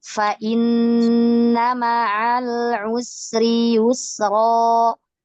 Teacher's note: Ini mad iwadnya ya, 2 harokat saja Ummahat, jangan terlalu panjang ya, dikurangi lagi.